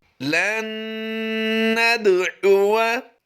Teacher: यहाँ पर हमने नून मुशद्दिद की वजह से गुन्ना आनी ही की आवाज़ देनी है